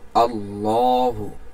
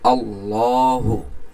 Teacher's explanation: লটাকে একটু মোটা করে আমরা পড়লাম